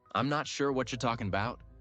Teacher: Match the reduced I'm not sure. The linked whatcha.